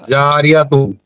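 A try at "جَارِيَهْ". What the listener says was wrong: না গোলতা, দাঁড়ান ভাই দাঁড়ান, গোলতা হাই রূপান্তরিত হবে। হ্যাঁ জারিয়াহ, জারিয়াহ, ঠিক আছে, মিলিয়ে পড়লে জারিয়াতুন।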